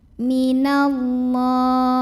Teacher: Karena alif lamnya ketemu dengan huruf syamsiyah yaitu lam. Maka alif lam ini tidak perlu kita baca ya, dilewatin aja. Dimasukkan langsung ke lam yang tasydid. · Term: alif lam syamsiyah